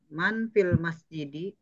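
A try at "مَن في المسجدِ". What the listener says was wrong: Kenapa di-nya panjang, Bu? Jangan irama yang mengalahkan panjang pendek, tapi harus dibalik.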